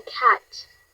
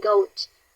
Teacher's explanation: The C sound is voiceless. Meaning you can't feel any vibration in your throat.